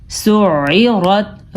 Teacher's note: را کو پر پڑھا ہے، عین کے مخرج کا آپ نے خیال رکھنا ہے